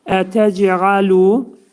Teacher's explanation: Cim hərfinin məxrəcində bir incəlik var ki, cim hərfi qəlqələ zamanı i'yə meyillidir. Az-azlıq i hərfinə meyillidir.